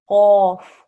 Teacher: you should feel the very back of your throat, right at the top, the very back of your mouth at the top of your throat. That's where the sound should come, yeah? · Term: The qaf